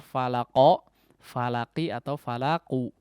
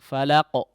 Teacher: Pemantulan atau sifat daripada qalqalah tersebut seharusnya atau idealnya tidak condong kepada salah satu daripada 3 harakat.